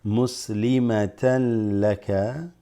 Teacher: So the tan becomes tallaka, right?